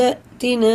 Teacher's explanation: الف نہیں پڑھا جائے گا، حمزہ پڑھا جائے گا، اس میں جھٹکا ہے، دال میں قلقلہ ہے۔